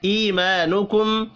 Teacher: ایمانکم، یا مدہ اور الف مدہ ایک ایک الف کے برابر کھینچ کر پڑھے جائیں گے۔ میم ساکن کے بعد حمزہ ہے، اظہار ہوگا، یہاں پر بھی غنہ نہیں ہوگا۔